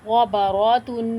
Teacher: تنوین پہ ایک الف کی مقدار رک کر ناک میں آواز چھپا کر غنے کے ساتھ پڑھیں گے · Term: غنہ